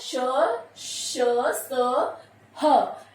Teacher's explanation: वायु जो है रगड़ खाकर निकलती है इसलिए इनको संघर्षी व्यंजन भी कहा जाता है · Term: ऊष्म व्यंजन